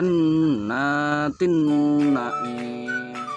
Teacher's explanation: Bighunnah karena ada tanwin bertemu dengan huruf nun makna cara membiarkannya suara tanwin dimasukkan ke huruf nun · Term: Idgham Bighunnah, idgham bigunnah